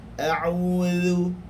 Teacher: zal merupakan huruf rakhawah, yakni suara kita akan terlepas padanya